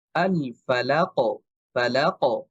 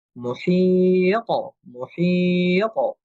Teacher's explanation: আওয়াজটা কিছুটা মোটা হওয়ার কারণে আওয়াজটা একটু মনে হয় যে উপরের দিকে যাচ্ছে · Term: কলকলা